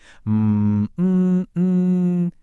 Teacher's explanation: Jadi, waktu nun sukun atau tanwin ketemu salah satu dari empat huruf ini, ya, nun, mim, atau waw, kita leburkan bunyinya sambil kita tahan dengungan dari hidung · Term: ghunnah